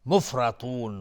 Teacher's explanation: مفرطون را حکمش استعلاست و تا از حروف استعلاست غلیظ تلفظ میشه. مفرطون مد عارض للسکون به مقدار 2 یا 4 یا 6 حرکت میتونیم مد بدیم.